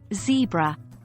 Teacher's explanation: Z, like the Z in zebra, pronounced by forcing air through the teeth.